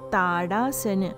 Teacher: letter T for Sanskrit is a soft dental sound, T sound, as in Tadasana.